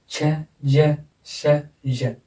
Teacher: चारों साउंड में हम जीभ को पैलेट के पास में ले जाते हैं ऊपर की साइड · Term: पैलेटो एल्वियोलर